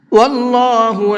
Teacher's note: اللہ کے لام کو پر کر کے پڑھیں گے کیونکہ اللہ کے لام سے پہلے زبر ہے